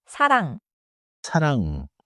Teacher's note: My tongue is not popping open at the end.